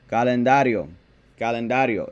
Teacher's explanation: it's a four syllable word and the natural accent is on the second to last syllable